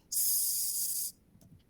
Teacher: Hay todavía un lugar por el cual transitar, el aire todavía puede pasar por ahí, pero ese canal por el cual puede transitar el aire es tan estrecho que produce fricción. Y eso se percibe como en turbulencias. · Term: Fricativa alveolar sorda